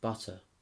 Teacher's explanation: be the result of american influence rootic colored vowels occur and the r sort of gets squashed into the vowel in front of it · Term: rotic colored vowels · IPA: bʌtɚ